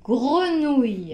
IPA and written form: grənuj (grenouille)